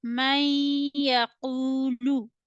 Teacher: So it means that there is idgham. So you need to connect mim fatha with ya. Do gunna here. · then it will be read idgham with gunna, and you need to read the words with deep nasal sounds.